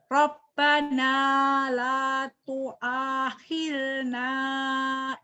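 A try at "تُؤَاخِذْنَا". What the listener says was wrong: tuakhidna bukan tuahilna, tuakhidna.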